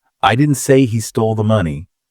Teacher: If you stress I, I didn't say he stole the money. It implies someone else did.